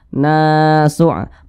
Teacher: Panjangnya 2 harakat atau kira-kira 2 ketukan. Nama madnya itu mad tabi'i atau mad asli.